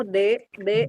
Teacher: kalau D itu dia ke langit-langit